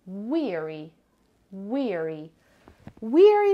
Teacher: It has two syllables and the stress is on the first syllable.